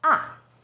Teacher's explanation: lower it first dips down then rises ah fourth tone position starts high then falls sharply